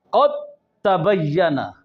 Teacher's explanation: लिहाजा दाल का इदगाम ता में जो हुआ वो ताम हुआ, यानी दाल ता में पूरी दाखिल हो गई, दोनों एक साथ मुशद्दद अदा हुई है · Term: इदगाम मुतजानिसैन ताम